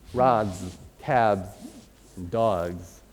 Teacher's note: if it ends with a voiced consonant, like rod, or cab, or dog, right, you'll get a Z at the end